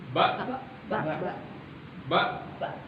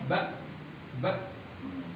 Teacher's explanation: Tidak ada durasi suara yang keluar ketika dia dilafalkan. Syiddah, dan dia berhenti dengan kuat.